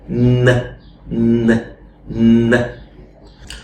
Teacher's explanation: it's an n sound that has the features of an interdental sound as well. How? Because normally we say n, and we said that your tongue goes to the back of your teeth ridge, but not in this one. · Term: dental n